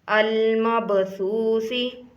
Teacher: با پر کلکلا کرنا ہے یعنی تھوڑا سا با کو ہلا کر پڑھنا ہے